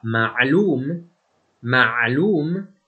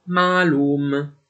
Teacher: quando la 3ain segue una a breve farà pronunciare questa a breve come una a lunga, come ad esempio nella parola araba ma3lûm, che in urdu si pronuncia semplicemente mâlûm (noto, conosciuto).